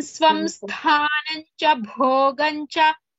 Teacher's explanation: Sthanam tha is Mahaprana.